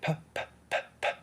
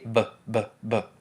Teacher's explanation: that they have the same place in manner of articulation just the only thing that's different is one is voiceless and one is voiced